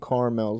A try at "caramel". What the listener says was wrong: That's not a thing. There's a second A.